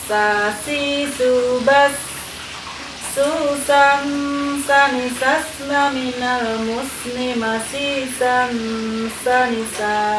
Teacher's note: Huruf sa itu ketika kita ucapkan seperti suara desisnya ular, ya. Sa, si, subas, susan, sanisasna, minal musni, masisan, sanisa.